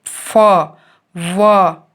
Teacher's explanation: fa और wa बोलते हुए जब हमारे अपर टीथ लोअर लिप के अगेंस्ट आ जाते हैं तब एयर स्ट्रीम पार्शियली ऑब्स्ट्रैक्ट और मॉडिफाइड होती है